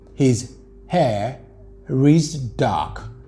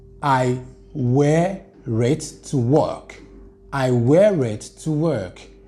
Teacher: the last r you link it with the vowel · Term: linking r